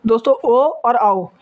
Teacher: ये भी कंठ और ओष्ठ से बोले जाते हैं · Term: कंठोष्ठ वर्ण